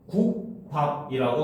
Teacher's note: 발음은 국밥이라고 된소리대기가 일어나죠